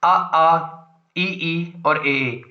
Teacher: आवृतमुखी यानी होंठों की स्थिति गोलाकार नहीं बनेगी